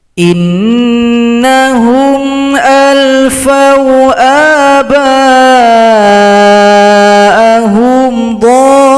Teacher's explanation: Ada lagi mad lazim mutsaqqal kalimi. Panjangkan dhad 6 ketukan baru tasydid.